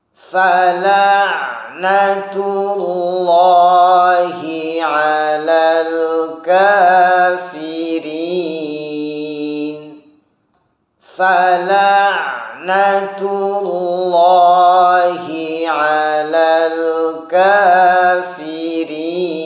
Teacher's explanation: Kemudian cara membaca lafaz Allah yang tafkhim, hindari dhammus syafatain atau mengumpulnya dua bibir ketika mengucapkan lafaz Allah yang tebal atau yang tafkhim